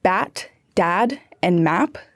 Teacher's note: the short a sound was replaced with the e sound which made words like bat dad and map sound like bat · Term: Inland North accent